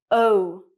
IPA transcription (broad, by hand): əʊ